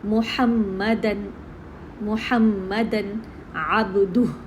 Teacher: ہم فتحہ تان کی جو تنوین ہے اس کا اظہار ہو رہا ہے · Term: تنوین کا اظہار